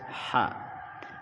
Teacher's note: Ha berada makhraj tengah tenggorokan, disempitkan aliran udara nafas